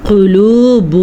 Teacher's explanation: قاف کو موٹا کر کے پڑھنا ہے کیونکہ قاف حروف مستعلیہ میں شامل ہے